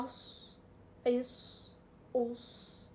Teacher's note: स्वाद ये होती तो विस्लिंग साउंड है लेकिन ये भारी हरूफ में आ जाता है